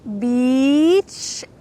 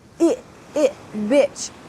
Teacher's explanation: We have a long E, beach. And with the bad word, we have short I, bitch.